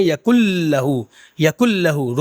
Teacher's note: جب ہم نون کو ملائیں گے لام اور را میں تو ناک میں آواز نہیں جائے گی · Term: ادغام